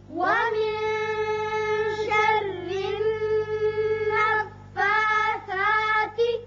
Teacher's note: وَمِن یہاں اخفا ہوگا، شرن را باریک ہوگا، نیچے زیر ہے، اب نون مشدد ہے یہاں نون پر غنہ ہوگا۔